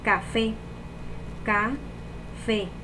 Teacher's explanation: La sílaba tónica es fe, porque lleva acento y es la más fuerte de esa palabra.